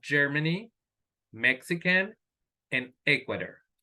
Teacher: So the stress is on the first syllable.